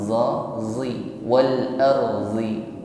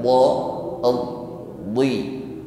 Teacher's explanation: makhrajnya kita pertemukan tepi lidah dengan gigi geraham atas. Jadi yang kita tempelkan adalah tepi lidah, bukan ujung lidah. Kalau menggunakan ujung lidah, maka huruf bod akan menjadi lemah, za, zi, wal arzi.